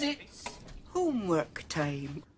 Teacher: That O, that's more Scottish than an O you'd have in an English accent.